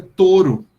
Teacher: você escreve um ditongo, porque no processo de evolução ele era um ditongo, mas efetivamente você pronuncia um monotongo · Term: monotongação